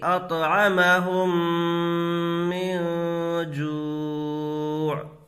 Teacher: میم ساکن کے بعد میم آئے تو غنہ کے ساتھ ملا کر پڑھیں گے۔ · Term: ادغام شفوی